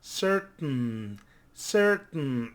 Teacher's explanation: we stop the T and then we pronounce the N